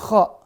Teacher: Maka sekarang Kho di tenggorokan atas bersama huruf Gho. Ya, maka pastikan ketika melafalkan huruf Kho ini tempatnya di tenggorokan atas.